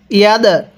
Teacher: দালটা ধাক্কা দিয়ে পড়ব, কারণ দালটা হলো কলকলার হরফ।